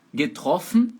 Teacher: Getroffen, o O é aberto. Por quê? Porque está antes de consoante dupla, está antes de FF, beleza?